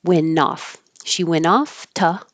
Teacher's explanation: You don't have to say went off. You can just skip the T, use the N to connect to the O.